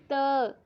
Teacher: आपकी जो जीभ है वो दांतों के साथ लगेगी